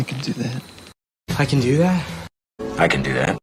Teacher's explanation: In positive sentences, it is pronounced kin and is unstressed.